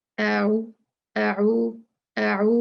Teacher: कुछ लोग पढ़ते हैं आऊदु, आऊ, आ भी उतना खींचते हैं, ऊ भी उतना खींचते हैं, जो कि गलत है। अ एक काउंट है, ऊ दो काउंट्स हैं।